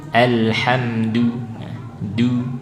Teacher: Syiddah tahan udaranya tapi jelas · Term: dal